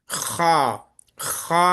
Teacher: హ హ అనేది మన గొంతు పై భాగంలో నుండి వచ్చే అక్షరము ఇక్కడ కొండ నాలుక ఇక్కడ ఉంటుంది చిన్న నాలుక పర్జీబ్ అంటాం మనం పర్జీబ్